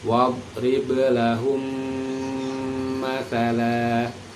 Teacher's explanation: Mim sukun bertemu dengan huruf mim yang berharokat fathah, dibaca dengung. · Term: idgham mimi